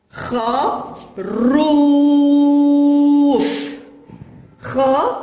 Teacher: إنه المد بالواو ويسبقه حرف الراء وعليه ضمة وينطق ضمة شديدة